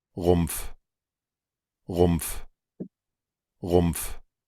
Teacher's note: esta pronunciación puede sonar con la P o sin la P. O sea, puede sonar algo como Rumpf, Rumpf, por ejemplo, si lo hacemos con la R umlaut, o bien podría sonar como Rumpf, Rumpf, con la P y la F.